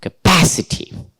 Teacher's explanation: So, pa, there should be the stress. Therefore, 1, 2, 3, pa, capacity.